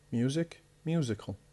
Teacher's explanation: The stress is on the first syllable, on the original word.